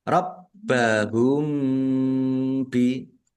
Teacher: Rabbahum bi baknya ada tasdidnya dibaca double ditekan dan ditahan biar tampak doublenya. Mim sukun bertemu dengan huruf ba bacaan ikhfa syafawi